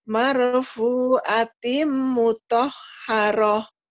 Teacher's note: timnya ditahan karena idgham bigunah ya